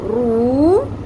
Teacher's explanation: رو پیش واو، رو، 1 الف کے برابر کھینچنا ہے ہم نے اس کو، کیونکہ واو حرف مدہ ہے، کیونکہ واو ساکن سے پہلے پیش آ گئی۔